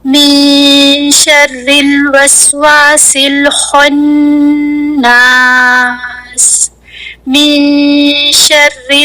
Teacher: زبان شین کے مخرج کو بھی ٹچ نہیں کرے گی، بلکہ شین کے مخرج کے بالکل قریب جا کر زبان ہینگ ہوتی رہے گی، لٹکتی رہے گی. اور جتنی دیر زبان شین کے مخرج کے قریب لٹکتی رہے گی اتنی دیر تک ہم ناک سے غنہ ادا کرتے رہیں گے · زبان کو نون کے مخرج پر بالکل نہیں رکھیں گے، بلکہ زبان کو شین کے مخرج کے قریب لے جا کر وہاں پر لٹکاتے رہیں گے. زبان شین کے مخرج کو بھی ٹچ نہیں کرے گی، بلکہ شین کے مخرج کے بالکل قریب جا کر زبان ہینگ ہوتی رہے گی، لٹکتی رہے گی. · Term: اخفا